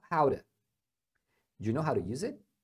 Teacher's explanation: você tem um t que fica no meio de dois sons vocálicos então ele acaba se transformando num R